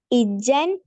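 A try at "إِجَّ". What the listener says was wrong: ഇജ്ജ എന്ന് മാത്രല്ലേ ഇജ്ജൻ എന്നില്ല.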